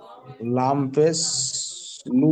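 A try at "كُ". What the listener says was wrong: এটা লাম না ভাই কাফ জি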